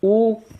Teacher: आप बोल के देख लीजिए, ये तो बहुत आसान है। ऊ बोलिए, ओठ जो है बिल्कुल गोल हो गया ना वृत्तनुमा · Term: वृत्तमुखी